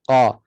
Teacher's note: makhrajnya pangkal lidah sentuh pada langit lembut dekat-dekat anak tekak Q jangan berangin Q huruf q tidak ada angin kalau bunyi · angin tidak ada Q eh maka dia huruf yang sifatnya istil'ak Tebal juga pangkal lidah terangkat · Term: huruf qf